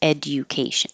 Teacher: you don't have to do the J at all and you can say education no problem